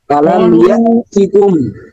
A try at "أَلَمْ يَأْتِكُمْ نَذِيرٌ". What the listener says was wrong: এটাকে স্পষ্ট করতে হবে। ইয়াতিকুম, হ্যাঁ, এখানে এসে একটু স্পষ্ট করতে হবে এই সুকুনটা।